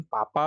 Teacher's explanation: पापा बोलते समय हमारे होठ जो है वो आपस में मिलते हैं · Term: ओष्ठ